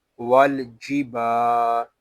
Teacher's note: با الف زبر با، ول جی با۔ با کو ایک الف تک کھینچ کر پڑھیں گے کیونکہ یہاں الف مدہ ہو رہا ہے